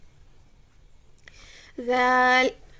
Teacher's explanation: زبان کی نوک سامنے والے دانتوں کے سرے سے لگے تو ذال ادا ہوتا ہے